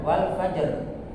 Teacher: Makhraj kita harus sampai ro, tapi tidak perlu diperdengarkan